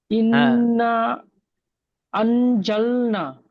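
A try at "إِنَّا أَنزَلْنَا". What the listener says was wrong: মাশাল্লাহ, খুব সুন্দর বলেছেন, তবে টানটা একটু ভুল হচ্ছে, টানটা আর একটু বেশি দিতে হবে। ইন, ইনটা প্রথমে নুনের উপরে তাহলে গুণনা করতে হয়, নুনটা প্রথম গুণনা করবেন, তারপরে টানটা হবে।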